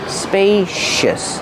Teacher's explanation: Use a long a like pay and say spacious. The C makes a sh sound like shoes and show.